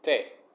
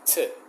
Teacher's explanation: In Spanish, it's te. You kind of put your tongue between your teeth or next to your teeth